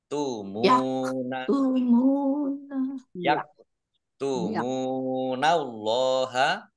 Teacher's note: mim domah wawu sukun matobi'i panjang 2 harokat. Allahnya dibaca tebal karena harokat di depannya fathah.